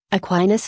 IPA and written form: əˈkwaɪnəs (Aquinas)